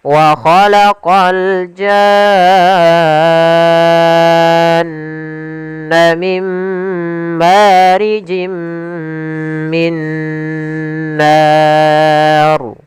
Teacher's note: Kemudian pada lafal nar ada mad arid disukun yaitu kita boleh memanjangkan pada lafal na itu 2 harokat, 4 harokat ataupun 6 harokat. Kemudian untuk huruf ra-nya dibaca ra tafkhim karena sebelumnya yaitu fathah.